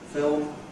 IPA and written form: fɪɫm (film)